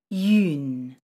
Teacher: This is called a nasal vowel. It's created by combining the sounds yu plus n, but should be pronounced as one sound.